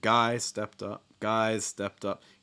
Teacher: i'm just hearing that extra pitch just a little bit higher on guys